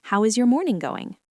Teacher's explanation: use the bounceback question with a falling intonation